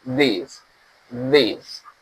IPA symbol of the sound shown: ð